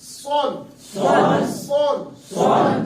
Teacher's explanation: حروف مستعلیہ سے ہے سواد. آواز کو پر ادا کریں گے